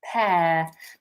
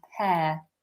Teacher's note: Notice how my mouth is relatively open. I'm not pronouncing the R at the end.